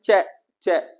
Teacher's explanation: च एक वर्ण ऐसा है स्पर्श संघर्षी होता है